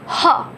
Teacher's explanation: ह भी आपका ऊष्म व्यंजन में आएगा क्योंकि इसको बोलते वक्त भी ऊष्मा निकलती है